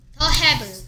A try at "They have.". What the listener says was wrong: They have. 더가 아니죠 이게 어떻게 더 They는 여러 명을 they라고 하죠.